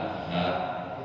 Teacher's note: Ha itu makhrajnya aqsal halqi